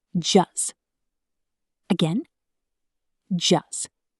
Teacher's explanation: The T in just almost always disappears. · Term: T drop